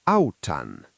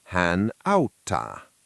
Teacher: When I add the I hook (-n), the word gets crowded. One t has to leave. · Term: consonant gradation